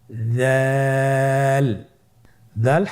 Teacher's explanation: দাল হরফটিও বারিক হরফ। উচ্চারণ করার সময় অবশ্যই তিন আলিফ টেনে পড়তে হবে